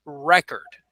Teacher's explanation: want to use the word as a noun we would use the stress would be at the beginning of the word